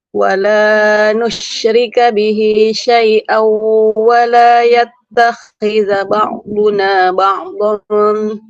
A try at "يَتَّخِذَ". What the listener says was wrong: Sebentar, Ibu, bukan yattakhidha. Huruf kho-nya tidak bertasydid.